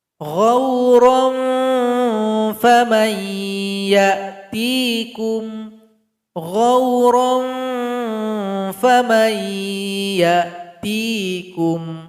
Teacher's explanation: Bunyi ikhfanya mengarah kepada huruf fa. Huruf fa tempat keluarnya ujung gigi seri paling atas. Tempelkan dengan bibir bawah. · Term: Ikhfa awsat